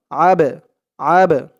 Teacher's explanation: আবে একটু ধাক্কা খাবে আওয়াজটা কারণ এই বা টা কলকলার হরফ কলকলা মানে ধাক্কা দিয়ে পড়া আবে দাল পেশ দু আবেদু হা